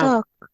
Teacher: the L doesn't sound in that word